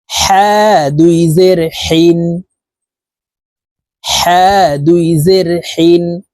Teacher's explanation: হা হরফের উচ্চারণ হলকের মধ্যখান থেকে পড়তে হবে কারণ হার মাখরাজ হালকের মধ্যখান থেকে হবে